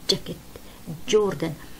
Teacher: هاي الكلمة بلفظوها جاكيت لأنه صوت الإج أسهل من صوت الإج. الإج لما بتلفظيه بتحسي مجرى الهواء تسكر عندك، جاكيت جوردن، مش جوردن زي هاي، مش جوردن لا، هي إج زي هيك جوردن. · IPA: /dʒ /